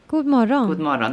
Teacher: in everyday kind of speech you say morgon, you don't pronounce the G